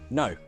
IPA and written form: nəʊ (no)